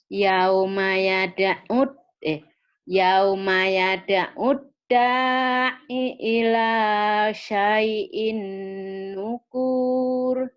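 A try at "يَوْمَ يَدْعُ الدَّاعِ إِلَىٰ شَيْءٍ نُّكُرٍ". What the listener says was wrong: Iya, nukurnya itu syai'in nukur gitu pendek ya, nggak dipanjangin.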